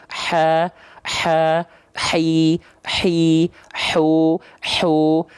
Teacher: ditekannya di bagian tengah tenggorokan makhrojnya maka sifat nafasnya itu karak karakteristik nafasnya seperti orang yang sedang berbisik atau seperti orang kepedesan ha ya Ada bisik-bisiknya dulu ha ha hi hi hu hu · h kecil punya salah satu sifat yang khas dari huruf H kecil nama sifatnya adalah hams hams itu artinya mengalir nafas